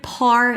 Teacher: Pop the p. Put a little a after.